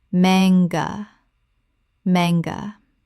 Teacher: Two syllables with the stress on the first. The A is short, not long.